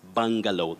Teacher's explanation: bungalow many people say bungalow but it's bungalow that letter you takes the mid central sound ah just like in the word buffalo